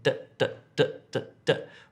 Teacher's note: We have problems pronouncing d. Apparently you have a sound where your tongue hits the front teeth and you say d, d, d, d, d.